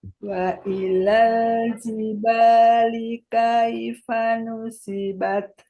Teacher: Jiba, banyak panjang dulu, baru li. Linya pendek.